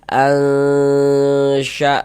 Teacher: Kemudian bagian al-nya itu suaranya itu kita tahan, kita panjangkan sejenak, kita dengungkan sepanjang 2 harokat. Al-sya'na, na dibaca panjang.